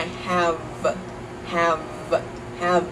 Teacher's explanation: focus on keeping those final consonants voiced so practice saying I have have have and keep your voice